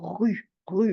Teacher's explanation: le R de rue c'est un R qui racle